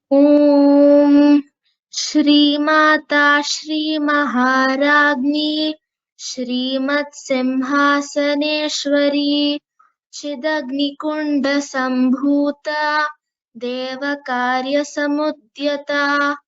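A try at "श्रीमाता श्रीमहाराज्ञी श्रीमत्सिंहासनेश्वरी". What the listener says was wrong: Shri Mata, the Mata Dirgha is there, okay? Shri Mata, otherwise it was okay.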